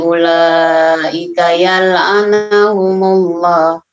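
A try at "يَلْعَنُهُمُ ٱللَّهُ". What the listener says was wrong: Nah, hati-hati, yal'anu, bukan yal'ana.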